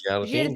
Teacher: The last sound is the I, but it's a nasal I.